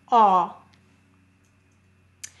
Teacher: when you say aw, notice your mouth is forward and round. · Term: broad